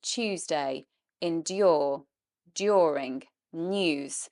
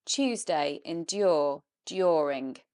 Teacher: if you want to say the British way, it would be Tuesday, endure, during, news, and you need to bring in that y. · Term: yod dropping